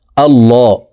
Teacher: এখান থেকে বলছি, দেখুন ونشكرك ولا نكفرك ونخلع ونترك من يفجرك اللهم إياك نعبد আল্লাহ, এখানে ল বলে পড়তে হবে, এই লামকে ল বলে পড়তে হবে, কারণ আল্লাহ শব্দের আগের হরফে জবর আছে, এই কারণে এই লামকে মোটা করে অর্থাৎ ল বলে পড়ব